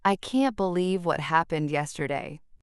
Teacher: Feel how your tone rises and falls. Notice how the word can't stretches slightly when expressing surprise